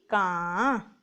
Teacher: ਚਲੋ ਅਸੀਂ ਸ਼ੁਰੂ ਕਰਦੇ ਆਂ ਬਿੰਦੀ ਦੀ ਆਵਾਜ਼ ਕੀ ਨਿਕਲਦੀ ਹੈ ਬੱਚਿਓ ਆ ਬਿੰਦੀ ਦੀ ਆਵਾਜ਼ ਜਦੋਂ ਨਿਕਲਦੀ ਹੈ ਗਲੇ ਵਿੱਚੋਂ ਆਵਾਜ਼ ਜ਼ਿਆਦਾ ਆਉਂਦੀ ਹੈ ਹਲਕੀ ਜਿਹੀ ਨੱਕ ਵਿੱਚੋਂ ਆਉਂਦੀ ਹੈ